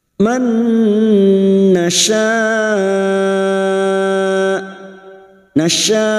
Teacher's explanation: memasukkan dengan mendengung masuk pada huruf mim dan mendengung selama 3 harokat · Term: idgham bi gunnah